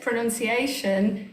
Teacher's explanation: it's the shun where we hear that um that schwa sound